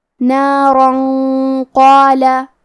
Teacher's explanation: اور اگر یہ کلمہ کو پوری آیت کے ساتھ ملا کے پڑھے تو کیونکہ را پہ تنوین زبر ہے پھر حرف القاف آتا ہے کلمت قالا، اور قاف حروف الاخفاء میں سے ہے تو ہم یہ حکم کو غنہ کے ساتھ ادا کریں گے